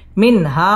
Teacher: ইজহার গুন্নাহ ছাড়া স্পষ্ট করে পড়তে হবে